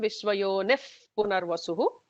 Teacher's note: Visarga followed by a pa will get a F kind of a sound. So it will become Vishwayonif Punarvasuhu.